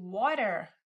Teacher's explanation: aqui o T tá assumindo o som do D